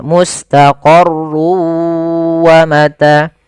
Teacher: masukkan tanwin ke huruf waw sehingga suara n-nya hilang. Tinggal ganti wa, maka mustaqarrun awalnya menjadi mustaqarru karena dia bertemu waw, masuk ke waw. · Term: idgham bi gunnah